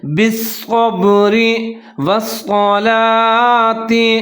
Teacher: صاد کو موٹا کر کے پڑھنا ہے اور صاد کے اوپر مشدد ہے، اس کو مضبوطی کے ساتھ پڑھیں گے